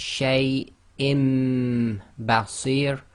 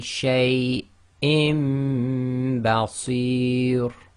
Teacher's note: So we have Hamza with kasratain followed by ba, so they do the Iqlaab. So the Noon Saakin in the kasratain is changed to a meme. So they've substituted one of the fathas for a meme.